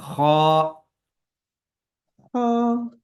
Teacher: خا کو موٹا پڑھیں گے اور آواز سانس کو باہر کی طرف نکالیں گے، خا۔ خا ہاں تھوڑا سا بلند آواز سے، خا۔